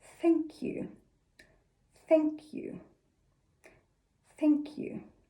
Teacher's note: To make the th sound, we need to get a finger, put it up against your lips, and make sure when you say this sound that your tongue touches your finger. I have my teeth gently resting on the top and bottom of my tongue, allowing free airflow above and below my tongue. If your finger is wet after you've said the sound, you'll know that you're pronouncing it correctly. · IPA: /θ/